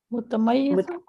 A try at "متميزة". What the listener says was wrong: Here we read it mutamayyazatun. The ya should have a fatha. Mutamayyazatun.